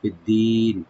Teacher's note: মাদ্দা আরজি হয়ে যাবে, 3 আলিফ বিন্দু টেনে আমরা থামতে পারবো